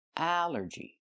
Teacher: The stress is on the first syllable.